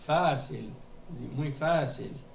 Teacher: Il faut mettre une prolongation sur le A. Et ils mettent l'accent dessus pour qu'on puisse savoir justement qu'il y a une prolongation sur le A.